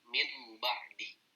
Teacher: Nah, contohnya misalkan min ba'di, ada nun ketemu ba. Maka prakteknya adalah gunnah ya, masuk ke hidung. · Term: iklab